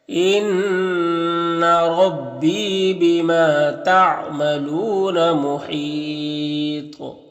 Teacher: انا نون مشدد غنہ ہوگا · وقف کریں گے تو مد عارض وقفی ہوگا، اور تو میں قلقلہ ہوگا، اور تو حروف مستعلیہ میں سے تو اسے پر بھی پڑھیں گے